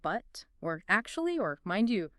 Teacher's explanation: Yeah, and connectors often have a little fall rise, where it's like, but, or actually, or mind you, huh. It dips down, then comes back up slightly, signaling, hang on, I've got more to say.